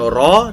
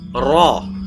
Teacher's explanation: ra di sini dinamakan sebagai ra tafhim, dibaca tebal. Jadi bukan ra tapi ra, ya, agak berat, agak tebal.